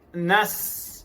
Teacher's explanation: nafas yang kuat melalui celah-celah gigi dan lidah